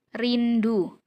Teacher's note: huruf R bunyi getar alveolar